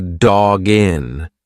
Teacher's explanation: Now, the next link is a little bit easier because we have a hard consonant dog and then a vowel. When you've got that hard consonant followed by a vowel, just push the two together like it's one word.